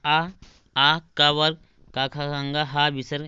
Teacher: ये सब कंठ से बोले जाते हैं